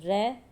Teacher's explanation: र तालव्य ध्वनि नहीं है यह एक मूर्धन्य ध्वनि है